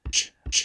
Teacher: this is a sibilant at the tail end with a low cutoff frequency so it's probably a post-alveolar fricative · so that's probably a voiced stop followed by a fricative the fricative itself doesn't look to be too voiced